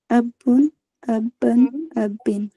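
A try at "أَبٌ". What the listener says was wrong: तजदीद कहाँ लगी है इसमें? नहीं, कहाँ लगी है? अबुन, अबन, अबिन।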